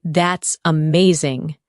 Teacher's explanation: When you say that's amazing, your tone rises with excitement